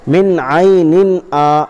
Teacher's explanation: الف مدہ کو ایک الف کے برابر کھینچ کر پڑھیں گے